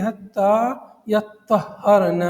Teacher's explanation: یعنی طاء کی تشدید اور ہاء کی تشدید، دونوں میں تشدید رہے